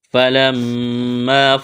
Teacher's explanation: میم مشدد ہے، غنہ کریں گے، آواز ناک میں چھپائیں گے۔